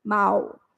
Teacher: começa com um som bem forte do a mas quando chega no u diminui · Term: ditongo decrescente